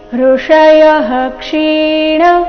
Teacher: ವಿಸರ್ಗದ ನಂತರ ಕ್ಷ ಬಂದರೆ ವಿಸರ್ಗದ ಉಚ್ಚಾರಣೆ ಹ ಎಂದು ಬರಬೇಕು